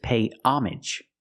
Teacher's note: If you see it after the word pay, usually it's pay homage, where the H is silent and the AGE is pronounced normally, like message and package